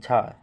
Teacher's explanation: तालव्य महाप्राण घोष व्यंजन वर्ण